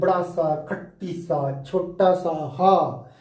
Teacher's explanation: ये जो है चारों व्यंजन जो हमारे हैं, इनको जब बोला जाता है तो हमारी जीभ बहुत ज्यादा रगड़ती है, संघर्ष करती है